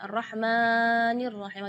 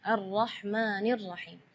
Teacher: tidak boleh lebih madnya dari dua harakatnya